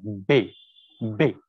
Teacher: حرف بے کو ملانے کے بعد جھٹکے سے چھوڑا جائے گا